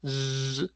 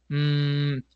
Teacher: sonidos como la letra Z, Z, que sí genera vibración, o el sonido de la letra M, mm, o N.